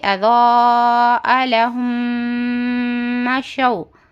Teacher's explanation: میم ساکن کے بعد میم آئے تو میم کو میم سے ملا کر گنہ کے ساتھ پڑھیں گے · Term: ادغام شفوی